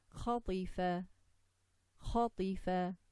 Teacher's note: Ta, letter of Tafkhim. Isti'la, the tongue is raised from the back.